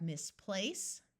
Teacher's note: notice place is emphasized more than Miss